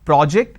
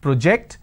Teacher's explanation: or project when i say project i'm using per o so when i have project it's an aw sound when i have project i have an o sound